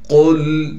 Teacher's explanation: قاف کو موٹا کر کے پڑھنا ہے، پھر قاف کو لام سے ملائیں گے